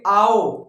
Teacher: आओ का मतलब जो बड़ा आ है उससे कम खुलता है मुंह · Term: अर्ध विवृत